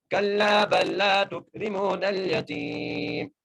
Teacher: تا کو کاف سے، را کو باریک کر کے، میم کو ایک الف دار کھینچ کے پڑھنا ہے